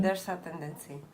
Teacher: The elision doesn't change the Z to an S.